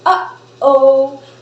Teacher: For example, when we say uh-oh, the glottal opens and closes and opens again and forms a glottal stop